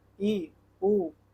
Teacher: संवृद्ध स्वर है। मुख का द्वार लगभग बंद रहता है।